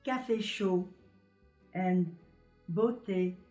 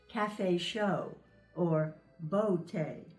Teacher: in French the vowel sounds are just one pure sound